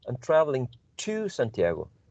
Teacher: so when i'm emphasizing the preposition i'm using a strong form